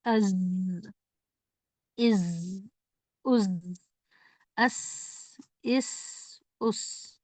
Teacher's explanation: एक तो सीटी जैसी आवाज अदा होनी है दूसरा आप देखेंगे कि जबान की नोक ऊपर के और नीचे के दांतों के करीब से लगती है · جیسے از، آپ تھوڑا اس کو لمبا کر کے دیکھیے. از، ایک تو سیٹی جیسی آواز ادا ہونی ہے، دوسرا آپ دیکھیں گے کہ زبان کی نوک اوپر کے اور نیچے کے دانتوں کے قریب سے لگتی ہے